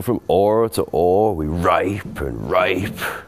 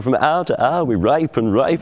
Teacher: The H drops at the beginning. H often dropped in early modern English in that way.